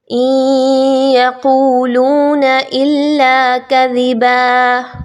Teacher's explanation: ان یقولون الا کذبا، اس میں آپ نے دھیان رکھنا ہے ادغام مع الغنہ کا اور ساتھ ہی ساتھ دال کے مخرج کا، کہ اس کو نرمی کے ساتھ پڑھنا ہے، سیٹی کی آواز کو نہیں لانا